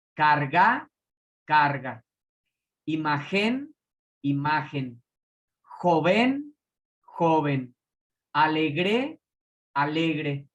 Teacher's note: Tienen su sílaba tónica en la penúltima sílaba.